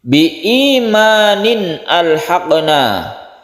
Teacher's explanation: ada tanwin bertemu dengan hamzah, ini kita sebut dengan izhar halqi. Izhar halqi artinya jelas dan terang dan tidak berdengung. Halqi artinya tenggorokan karena makhraj dari huruf-huruf izhar itu ada di tenggorokan, itu arti halqi.